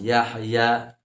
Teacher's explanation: ha itu dibaca wastul halqi di tengah di tengah tenggorokan · Ha sering sekali ditemukan membacanya itu dikolkolahkan. Yahya, ha itu dibaca wastul halqi, di tengah tenggorokan